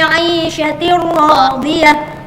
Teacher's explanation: tanwin bertemu ra tidak usah dengung, itu bila gunnah, tidak pakai dengung ya